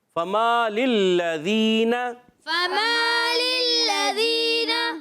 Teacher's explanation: پہلے لام کے نیچے زیر ہے، دوسرے لام پر زبر ہے، حرکات ہیں، حرکات کو نہیں کھینچنا ہوتا، مگر لام مشدد ہے دوسرے والا، مشدد حرف ذرا رک کر ادا کریں گے